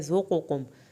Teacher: دونوں قاف، ایک قاف پر اور ایک پتلا، ان کو الگ الگ پڑھنا ہے